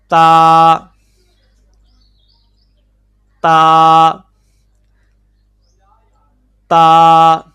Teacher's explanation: زبان کی نوک جب اوپر سامنے والے دو دانتوں کی جڑ سے لگے تو اس سے تا ادا ہوگا۔